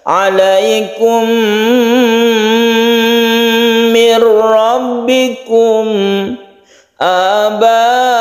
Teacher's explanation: khusus idgham mimi ini ketika kita masuk ke huruf Berikutnya ini kita dengungkan · kalau perbedaannya kalau mim itu berdengung kalau yang lain tidak berdengung yang berdengung ada dua mim dan Nun Nun bertemu Nun itu